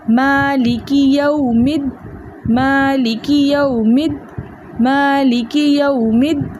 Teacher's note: میم کو ہم دال کے ساتھ ملا کر پڑھیں گے